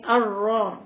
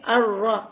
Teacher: یہاں پہ را کے اوپر زبر ہے تو اس را کو موٹا پڑھیں گے